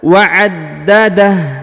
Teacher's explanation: Huruf ha yang di ujung berharokat u ini disukunkan ya, atau dimatikan karena berada di ujung ayat